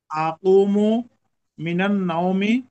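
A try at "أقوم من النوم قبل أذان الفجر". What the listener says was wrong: মাশাআল্লাহ, মাশাআল্লাহ, মুমতাজ, excellent, very good, very good.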